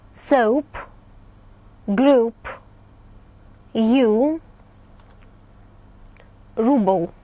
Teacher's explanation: Это долгий, напряженный звук U.